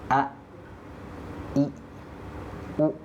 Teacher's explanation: dia pasti itu langsung terhenti suaranya ya terputus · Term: syiddah